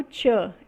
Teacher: é uma consoante africada alveopalatal